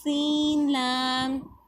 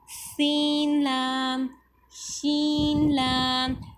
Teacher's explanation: اب سین میں سیٹی کی آواز آئے گی، جبکہ شین میں تفشی، یعنی کہ اس میں جب زبان ایسے اپنے مخرج کی طرف اٹھتی ہے تو پھر پھیل جاتی ہے اس میں آواز.